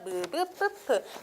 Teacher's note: 두 입술 소리, 무브뿌프는 입술이 닿아야지만 소리가 날 수 있는 거죠